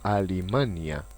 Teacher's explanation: en el que la N y la L van a permutar su posición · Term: metátesis